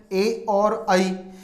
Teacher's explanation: ये वो स्वर है जिनका उच्चारण करते समय कंठ से ध्वनि आती है और तालु भाग का स्पर्श करती है, कंठ तालु है, ए और आई।